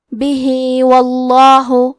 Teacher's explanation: کلمت بہی کے آخری میں ہاں کے نیچے کھڑی زیر ہے، یہاں حکم ہے مد صلہ صغرا، تو ہم اپنی آواز 2 مد کے برابر لمبی کریں گے